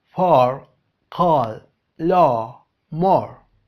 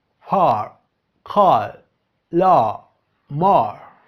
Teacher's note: Para hacer este sonido tenemos que abrir la boca más que la O del español y hacer O. Algunas palabras con este sonido son for, call, law, more.